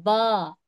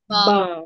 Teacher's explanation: दोनों होठों के गीले हिस्से से बा अदा होता है